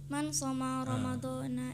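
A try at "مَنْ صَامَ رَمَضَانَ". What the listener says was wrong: So-nya panjang. Man shoma Ramadan, coba ulang.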